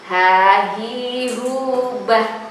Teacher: Kemudian masih huruf yang keluar dari tenggorokan bagian bawah, yaitu H